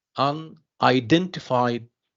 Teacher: say unidentified F defied yes or Dent I'm sorry Dent yes so Dent here is the stress syllable